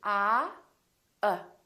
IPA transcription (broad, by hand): ʌ